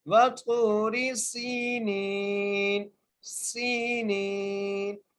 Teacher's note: سین کو سیٹی کے ساتھ ایک الف کی مقدار کھینچ کے پڑھیں گے اور نون کو بھی ایک الف کی مقدار کھینچ کے پڑھیں گے.